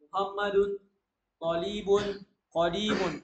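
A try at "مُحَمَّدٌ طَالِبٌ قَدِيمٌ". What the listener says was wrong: Ta-nya panjang. Muhammadun talibun qadimun.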